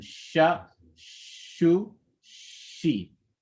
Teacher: They all start off with air, sh, and then they go into vibration.